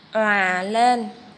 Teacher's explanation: Các em lưu ý tiếng òa, mình đọc tròn môi